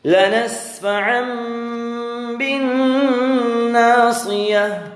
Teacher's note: دو زبر کی تنوین کے بعد با آیا ہے، تو دو زبر کی تنوین کا اقلاب ہوگا میم، آپ گنہ کریں گے اس میں